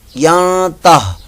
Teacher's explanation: اور آگے جو ہے یہ دیکھیں یہ ین تہ نہیں پڑھنا, نون ساکن کے بعد آگے تا آ گیا تو یہاں پر اخفاء کا قاعدہ لگ رہا ہے